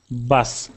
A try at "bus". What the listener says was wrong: So I heard you say bus, like a bus, like B-A-S. And I just want to make sure it's sounding like that sound. Bus, bus, bus. Very slight, but when you were reading, it was a little worse.